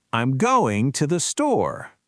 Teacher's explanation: Going and store are the content words. They are the peaks. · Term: staircase effect